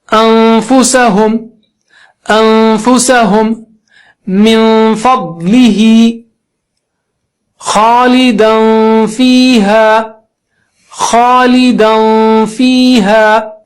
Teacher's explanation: فا بولنے کی تیاری کرتے کرتے ناک سے آواز نکالنا ہے